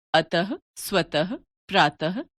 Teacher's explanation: विसर्ग का उच्चारण ह व्यंजन के रूप में किया जाता है